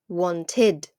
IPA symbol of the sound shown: ɪd